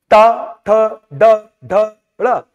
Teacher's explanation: ट ठ ड ढ ड़ मूर्धन्य वर्ण है।